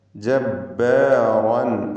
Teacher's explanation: റാഇനെ തഫ്ഖീം ചെയ്ത് തടിപ്പിച്ചുച്ചരിക്കണം. അതിലുള്ള റാഇൻ്റെ തൻവീനിന് ശേഷം ആയിന് വന്നതുകൊണ്ട് ഇൽഹാർ ഹൽക്കി നൽകി മണിക്കാതെ വെളിവാക്കുക.